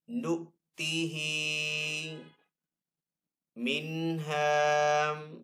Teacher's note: ہا کے نیچے یہاں پہ کھڑا زیر ہے تو ہا کو ایک الف دو حرکات کے برابر کھینچ کر ادا کریں گے